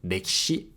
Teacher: the /i/ sound in ‘ki’ can be devocalized